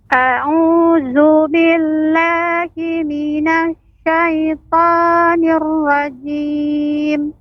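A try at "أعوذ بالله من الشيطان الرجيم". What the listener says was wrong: pengucapan shin, lebih tadi shin itu suaranya menyebar, sha, ya, sha. Tadi kurang terdengar ya shinnya, coba lebih ditambahkan shin, sha.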